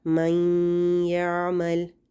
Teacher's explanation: ٹھیک ہے، تو اب ہم نون کو نہیں پڑھ رہے، ہم من یعمل نہیں پڑھ رہے، ہم نے کیا کیا، نون کو یا میں داخل کر دیا، مدغم کر دیا، اور پھر ہم نے یا کو شد کے ساتھ پڑھا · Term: ادغام